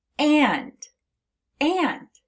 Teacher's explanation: It's making an eh. And that is the nasalized A.